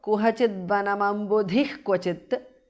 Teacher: Kuhachidvanam ambudhihi. Visarga changes to jihva mulya